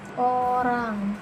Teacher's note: O seperti pada kata bola, bibir membulat dan lidah di posisi belakang sedang.